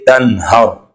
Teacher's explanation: یعنی جو نون کی ساؤنڈ ہوتی ہے اس کو ہم ظاہر کر کے پڑھیں گے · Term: اظہار